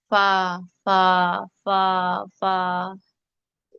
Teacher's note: आगे नीचे वाला होंठ, नीचे वाले होंठ का जो तर हिस्सा है, यानी कि जो अंदर वाला उसका तर हिस्सा है, वहां ऊपर के जो दांत है ना, सनाया के सामने वाले दो, वो लगते हैं और फा निकलता है। फा लगा के देखें जरा, फा फा फा फा, वहां आपके दांतों का किनारा लग रहा होता है, उससे फा निकलता है। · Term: शफवी